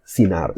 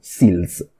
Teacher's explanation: The N sounds always become an L, so the N's in Proto-Austronesian become an L. Any kind of R or R sound, any kind of R type sound also becomes an S.